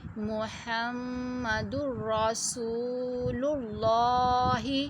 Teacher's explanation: لام کو پر پڑھنا ہے، لام سے پہلے پیش آ گیا